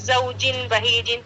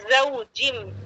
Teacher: یعنی تنوین کی آواز کو میم میں بدل دینا ہے. اسی کو اقلاب کہتے ہیں، بدلنے کو آواز کو.